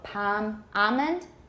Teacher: i tend to have something of a dark l i have velourization so palm almond one of my teachers said that but i